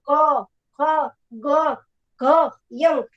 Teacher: આપણી જીભ છે એનો આગળનો ભાગ ઉપરના પોચા તાળવાને અડે છે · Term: કંઠ્ય વ્યંજન